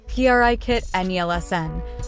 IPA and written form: pʁiˈkitə ˈne̝lsn̩ (Brigitte Nielsen)